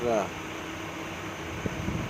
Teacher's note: जिन व्यंजनों के उच्चारण में जिह्वा को 2-3 बार कंपन करना पड़ता है, वे प्रकंपित कहलाते हैं